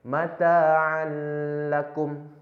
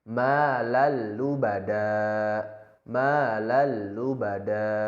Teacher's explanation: Artinya setiap nun mati atau tanwin yang bertemu salah satu daripadanya terjadi hukum atau kaidah yang mana nun mati atau tanwin tadi masuk atau melebur tapi tidak ditekan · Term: idgham bila gunnah